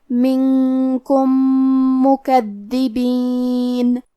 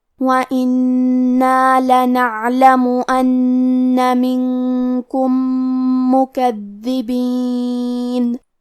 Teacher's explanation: حرف الدال پہ تشدید ہے، لہذا ہمیں 2 حرف کے برابر دال کو پڑھنا ہے، اور کیونکہ تشدید زیر کا ہے اور با کے نیچے بھی زیر ہے تو ہم یہ دونوں زیر کو ظاہر کریں گے.